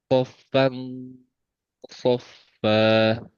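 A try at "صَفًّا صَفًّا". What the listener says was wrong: Nah, ketika sofang, ketika digunanya itu suaranya hilang. Sofang.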